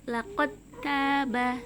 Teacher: karena bertemu dengan huruf ta yang sama makhrajnya dengan huruf dal, maka langsung dimasukkan ke huruf ta-nya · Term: idgham mutajanisain